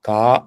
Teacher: இந்த கா என்ற எழுத்து ஆ என்ற உயிரெழுத்தை போலவே நெடில் தன்மை பெற்று இரண்டு மாத்திரை அளவு கால அளவு ஒலிக்கும்